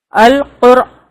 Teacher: را ساکن ہے، اس سے پہلے پیش ہے، القر یہ موٹا پڑھیں گے